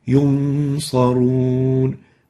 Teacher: So the Nun has, remember, double articulation, one from the mouth, oral, and the second from the nasal passages, nasal. So the oral articulation would be totally eliminated, while we preserve the nasal articulation, adding it like a nasal tone to the following letter, which is the sad. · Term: Ikhfa